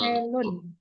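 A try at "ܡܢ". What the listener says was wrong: hurufnya hurufnya betul, tapi dia nggak pakai vowel. Dia nggak ada vowel di sini. Jadi men, itu aja. Men. Eh, nun itu nama letternya, nama hurufnya, tapi dalam pelafalan dia tetap men ya.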